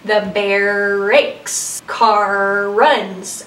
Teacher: you have those two R's kind of merging together. That can help facilitate that R at the end of the word because it's actually kind of cruising into the beginning of the word for that client working on the R. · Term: co-articulation, Co-articulation